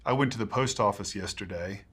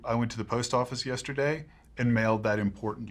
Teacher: non utterance final intonation units can end in a slightly Rising intonation pattern indicating the speaker's intent to continue to speak